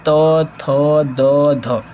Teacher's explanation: जब बोलते हैं तो हमारे दांतों से हमारे जीहा टच होती है तो इसको त वर्ग